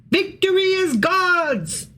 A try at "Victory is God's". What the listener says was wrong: Nope, you didn't. You didn't do it right because it has an apostrophe S on the